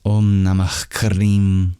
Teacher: that visarga, that expulsion of breath symbolized by the H in Namaha, it turns into a very rare sound before the K, known as a guttural fricative. In Sanskrit, it's known as the Jiva Muliya, and it sounds like a raspy kind of deep that's said before the Kleem and after the Nama.